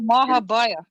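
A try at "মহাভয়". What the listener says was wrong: In Sanskrit, you'll say more by, but Bengali, they pronounce more of the O sound, Mahaboy.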